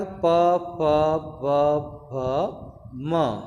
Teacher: हम ओठों के संयोग के बिना जो है इनका उच्चारण नहीं कर सकते। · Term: ओष्ठ